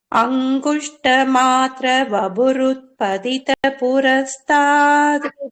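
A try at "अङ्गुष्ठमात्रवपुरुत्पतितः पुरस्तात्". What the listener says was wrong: அப்புறம் பூக்கு அப்புறம் நடுவுல இஃப்னு வரணும். பதிதः புரஸ்தாத்.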